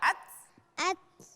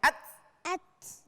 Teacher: Ada desisan sedikit sekali. Ats, keluar anginnya.